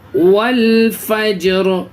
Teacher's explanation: الف کو نہیں پڑھا جائے گا بلکہ جو لام ہے، لام پہ جس پہ سکون ہے واو کو اس لام میں ملائیں گے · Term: حروف قمری کا قاعدہ